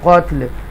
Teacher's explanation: ये वक्फ की सूरत में लाम जो है, हरकत वाला लाम जो है वो लाम साकिना हो जाएगा